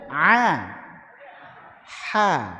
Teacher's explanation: Hamzah dan ha ini ada jarak yang tipis Hamzah itu paling bawah agak naik sedikit itu H tapi dua-duanya masih di kawasan tenggorokan bawah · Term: huruf halqiyah